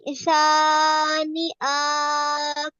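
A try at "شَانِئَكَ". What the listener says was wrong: আক টান হবে কেন? আমাদের হরফ আসছে কি? হ্যাঁ, শানি আক। হরকতের উচ্চারণ দ্রুত। শানি আক। এই কাফে হচ্ছে ওয়াকফ করার কারণে শুধুমাত্র কাফের উপরে জজম হয়ে যাবে, আর কিছুই না।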